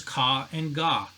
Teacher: Another one is ka and ga, not ja, ga. So the hard kind of a G sound, very similar in the back of the throat with a ka sound.